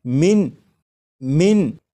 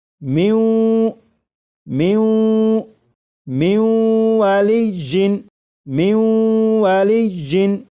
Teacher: واو میں ادغام کریں گے، ملا کر پڑھیں گے اور غنہ کر کے پڑھیں گے،